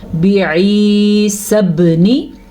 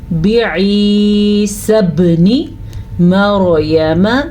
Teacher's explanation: آپ نے نوٹس کیا با پہ میں نے کلکلہ کیا کیوں؟ کیونکہ با کے اوپر جب ساکن آ جائے تو وہاں پہ جھٹکا پیدا ہوتا ہے. ایسا تب ہوتا ہے جب 5 حروف کے اوپر ساکن آ جائے. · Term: قلقلہ